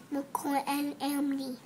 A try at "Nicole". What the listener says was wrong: Hey, it's Nicole, not Micole. You keep forgetting that. What does Nicole sound like?